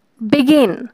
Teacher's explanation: বিটা softly এবং গিন হচ্ছে stress দিয়ে।